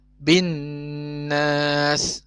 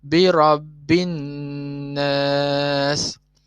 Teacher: Kita ambil satulah, wajibul gunnah. Okey, wajibul gunnah ni kita kena dua harakat.